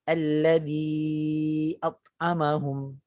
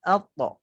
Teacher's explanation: Dalam keadaan pangkal lidah, bahagian belakang lidah tu tetap dinaik tinggi. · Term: qalqalah